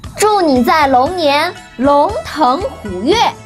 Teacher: 龙 second tone. 腾 second tone means gallop. 虎 third tone means tiger. 跃 fourth tone means leap or jump.